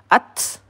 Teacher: ta sukun mempunyai sifat hames ada udara yang keluar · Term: sifat hamas